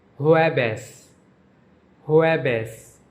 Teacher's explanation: Thursday is pronounced jueves, jueves. J is pronounced like H and V is pronounced like B in Spanish.